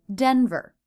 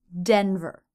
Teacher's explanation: stress is on the first syllable and the ER ending unstressed as always must be very short